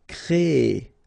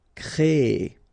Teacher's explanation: So it's quite interesting, sorry, here, because first you will have this C-R-E accent aigu, so you get the créer sound, and after that you get this ER sound, so E. So technically you will have this double E sound, créer, okay, so it's longer